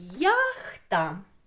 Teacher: буква одна а звуків два один голосний а другий М'який приголосний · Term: подвійний звук